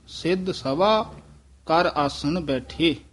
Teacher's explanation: ਇਥੇ ਠਮਕ ਲਾ ਦੇਣੀ ਹੈ ਕਰ ਆਸਨ ਬੈਠੇ ਇਥੇ ਵਿਸਰਾਮ ਹੈ ਸਭਾ ਜਿਹੜਾ ਉਚਾਰਨ ਹੈ ਇਹ ਬਬ ਨਾਲ ਨਹੀਂ ਕਰਨਾ ਭਬ ਨਾਲ ਸਭਾ ਉਚਾਰਨ ਕਰਨਾ